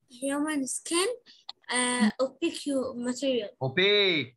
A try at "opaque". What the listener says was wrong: Opaque. Pronounce it opaque. UE in the end of words doesn't pronounce it. Okay, like tongue. You don't say tango. Okay, opaque, not opaque you, okay?